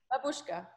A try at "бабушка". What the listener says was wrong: No, on the first, the stress is on Бабушка. Yeah, on the first one.